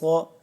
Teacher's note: صاد کو ہم موٹا پڑھیں گے، پر پڑھیں گے